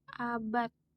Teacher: Tulisannya abad pakai D. Tapi kalau diucapkan bisa menjadi abad pakai T ujungnya.